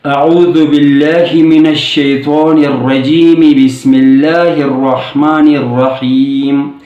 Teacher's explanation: اعوذ باللہ من الشیطان الرجیم کا آخری حرف کے نیچے جو بھی حرکت تھی یعنی زیر، اس زیر کی حرکت کو پڑھ کر پھر تسمیہ ہم نے شروع کر لیا۔ تو اسی طرح آخری حرف کو جو ساکن کرتے تھے وقف کے دوران، اب وصل میں ساکن نہیں بلکہ اسے یعنی حرکت کو پڑھ کر پھر آگے بڑھیں گے۔